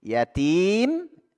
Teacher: Sebelum huruf mim di situ ada huruf Mad Thobi'i jadi dipanjangkan dulu ya enam harakat kita baca en harakat ya Mad aridli sukun Mad aridli sukun